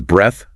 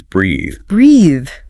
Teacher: your vocal cords should vibrate slightly, and the vowel is elongated